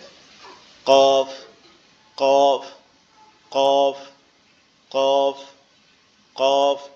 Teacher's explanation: এই যে কফ অক্ষরটা আপনারা দেখতে পাচ্ছেন, এটা হচ্ছে আমাদের জিহ্বার গোড়া থেকে একটু আগে, অর্থাৎ জিহ্বার গোড়া থেকে, জিহ্বার গোড়া তার উপরে তালু, উপরের যে তালু অংশটা আছে ওইটার সাথে লাগবে। জিহ্বার গোড়াটা উপরের তালুর সঙ্গে লাগবে, লেগে উচ্চারিত হবে কফ, কফ, কফ, কফ, কফ এরকম ভাবে।